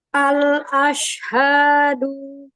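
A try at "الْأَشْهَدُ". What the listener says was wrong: Tahan lagi lam sukunnya, lebarin lamnya. Al-a. Al-ashhadu. Ya, lagi dialirkan sedikit lagi bainiahnya pada lamnya biar tidak ada seperti ada jeda. Al-ashhadu.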